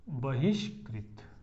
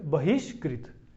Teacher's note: यहां पर इनमें से ए होना चाहिए ना, क हो, प हो या म हो, तो क है तो इस विसर्ग को क्या हो जाएगा, मूर्धन्य श हो जाएगा। तो ये क्या बन जाएगा, बहिष्कृत, ठीक है, क्या बन जाएगा, बहिकृत, बहिष्कृत, ठीक है।